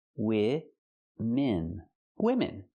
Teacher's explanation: Use the short I sound for both syllables.